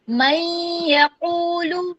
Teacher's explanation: ٹھیک ہے میں نے ایک الف کے برابر غنہ کیا. من یقول آپ کا غنہ واضح ہونا چاہیے.